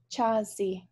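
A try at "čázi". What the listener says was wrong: Chazi. Chazi. Not so much the H sound. Chazi would be the nominative, but chazi. Chazi. Directly to the T. Chazi.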